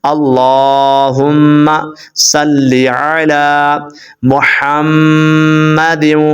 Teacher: میم کے اوپر آپ نے غنہ کرنا ہے اور ہا بریک پڑھنا ہے.